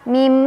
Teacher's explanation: Cara bacanya bunyi nun sukunnya diganti dengan bunyi mim ya. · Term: iqlab